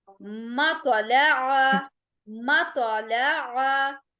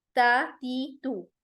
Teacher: मोटा भी करना है, झटका भी देना है, जबकि ता नरमी के साथ बारीक आवाज से बगैर झटके के अदा होगी